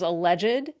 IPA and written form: əlɛʤd (alleged)